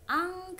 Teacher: Contohnya seperti lafaz ang. Nah, nun matinya menjadi bukan an, jadi dibacanya ang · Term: ikhfa